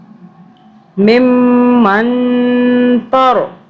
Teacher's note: اب یہاں پہ ہم نے میم پہ بھی ہم نے 2 سے 3 سیکنڈ کے لیے ہم نے میم کو ہم نے ناک میں رکھا 2 سے 3 سیکنڈ کے لیے، اور ادھر بھی نون پہ بھی ہم نے اخفا کیا 2 سے 3 سیکنڈ کا.